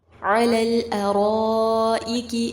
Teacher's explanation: آگے مد متصل ہے، 4 سے 5 حرکات جتنا لمبا کیا جائے گا